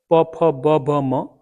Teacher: इनका उच्चारण हमारे दोनों ओठों के मिलने से होता है। प फ ब भ म, इसको ओष्ठस्थान है, ओठ का स्थान है।